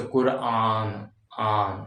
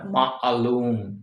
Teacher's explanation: अब आ है, यानी कि यहाँ पे जो अलिफ एक अ होता है, सिंपल अलिफ, लेकिन जो ऐन होता है, ऐन हलक से आवाज आती है